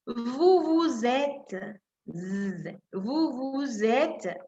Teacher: la digo Z porque es suave, es una sola S.